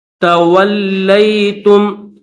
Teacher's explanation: وَأَطِيعُوا الرَّسُولَ، فَإِن تَوَلَّيْتُمْ، واو کو لام کے ساتھ ملائیں گے، یہ لام ہے اور لام کے اوپر تشدید ہے تو لام کو دبا کر سختی کے ساتھ پڑھیں گے